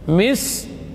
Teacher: Kemudian mim tawassut, mi, sin huruf shafir sughra, mis, ya, shafir sughra, jadi sisnya paling kecil. Huruf rakhawa dan hamas, hamas dan rakhawa mengalir suara dan udara. · Mis, ki, ki syiddah dan hamas, ki pangkal lidah menempel pada langit-langit yang lunak dan yang keras, itu setelah pangkalnya sedikit, ya, di depannya.